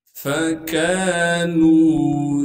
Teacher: फा को बगैर खींचे पढ़ेंगे। काफ के बाद अलिफ मद्दा होने की वजह से काफ को एक अलिफ के मिकदार खींचना है। नून को एक अलिफ के मिकदार खींचेंगे क्योंकि नून के बाद वाव मद्दा है।